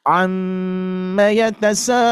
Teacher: Jangan terges gesa harus ditahan terlebih dahulu ya apalagi di sini ada mad wajib muttasil panjangkan sebanyak 4 harakat saja ya Meskipun sampai lima ya tapi kita patok saja empat ya jadi